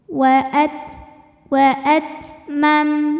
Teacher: Makin ditekan makin tidak keluar tertahan bunyinya. Tapi dari segi angin ada anginnya. Anginnya juga sama belakangan keluarnya kalau t-nya sukun.